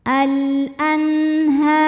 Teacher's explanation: hukum izhar halqi karena nun sukun menghadapi huruf ha maka Nun dibaca jelas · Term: idhar halqi